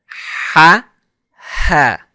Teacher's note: Now the ha is pronounced by first constricting the throat muscles. That's first. Second is blowing air through the windpipe. So it has a clear sound.